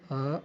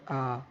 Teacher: जैसे हम बोलते हैं अ और आ, तो इसमें हम देख रहे हैं कि आ को बोलने के लिए ज़्यादा समय लग रहा है, अर्थात ये दीर्घ स्वर है।